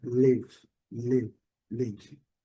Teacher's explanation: Esse I com som bem curtinho, live, live. Uma mistura de I com E